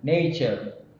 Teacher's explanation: So the first word, nature, has a stress on the first letter itself, that is N, nature. So here we have this nature, stress on the first syllable we have, trochee.